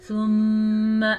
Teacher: ثم میم پہ شد ہے، غنہ ادا کریں